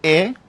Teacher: যখন আমি জীবটাকে উচ্চ মধ্যবস্থায় রাখবো। মানে উঁচু থেকে সামান্য নিচে। এবং জীবটা সামনে থাকবে তখন হবে এ।